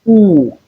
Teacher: long high back rounded vowel